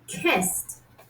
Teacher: right before the eddy ending for example when we say kissed because there is no vibration in the vocal chords it's voiceless